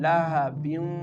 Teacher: the tanwin is merging with the letter waw and giving the sound lahabiu Here double kasrah is present below the ba. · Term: idgham